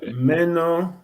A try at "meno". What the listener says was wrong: I think should be the other round. You have the long vowel here. Meno.